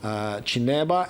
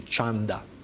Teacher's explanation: But actually, what I would like to draw your attention to now is the verb form chanda, which is actually past form from the infinitive chineba, and you can see clearly that during when conjugated, the verb changes its root vowel. It's e in the infinitive, in the masdar chineba, and it turns into a when it's put into past form. That would be chanda.